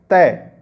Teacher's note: तो दोस्तों देखिए यहाँ पे बोल के देख लीजिए, तय। जब आप तय बोलोगे तो देखना जो जीभ है वो दांतों से टकराती है।